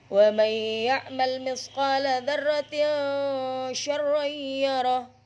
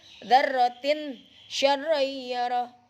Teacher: Jangan dzarratin syarrayyara, nggak boleh. Jadi kasrotain bertemu huruf shin, hukumnya apa? Ikhfa, jadi harus samar.